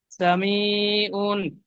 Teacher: আইন দু পেশ উন বলে টান দিচ্ছেন এখানে টান হবে না